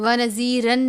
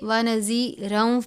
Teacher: ونذیرن نہیں پڑھیں گے بلکہ ونذیرا پڑھیں گے، واو کی آواز آنی چاہیے